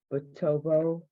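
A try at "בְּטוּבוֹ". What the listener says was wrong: Hold on, look at the middle vowel on that word.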